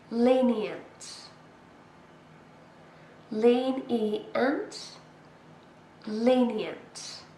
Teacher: 3 syllables, and we stress the first one.